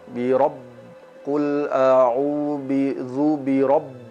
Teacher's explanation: jangan sampai huruf ba yang kita baca terlalu tebal, terlalu berat, seolah-olah dia menggembung